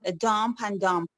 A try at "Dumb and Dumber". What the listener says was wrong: it's Dumb and Dumber. You don't pronounce the P. Yes, Dumb and Dumber.